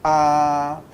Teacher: o A, você vai ter essa língua mais baixa. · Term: vogal baixa